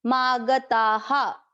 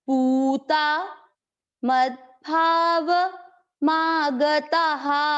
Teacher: ये विसर्ग है तो विसर्ग को किस तरह से उच्चारण करना है, इसके पिछले वाले अक्षर की मात्रा। अक्षर की मात्रा क्या है, आ, इसलिए विसर्ग को पढ़ा हा।